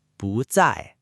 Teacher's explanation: When bù is followed by a fourth tone word like zài, it changes to the second tone bú. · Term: Tone change